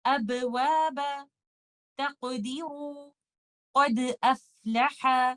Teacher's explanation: Letter دال، letter قاف اور لیٹر با پہ میں نے لائٹلی باؤنس کیا اور آگے موو آن کر کے، اس کو کہتے ہیں قلقلہ صغرا.